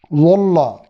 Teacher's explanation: वल्ला, वल्ला ज़्वाद के साथ, यानी ज़बान को अगर हम सामने वाले दांतों से पीछे रखें और ऊपर दाढ़ों की तरफ बाएं की दाढ़ों के साथ किनारे को लगाएं, ज़बान को ऊपर उठा दें, तो अगर कुछ कमी भी रह गई तो ये ज़्वा नहीं होगा, वाज़ हो जाएगा।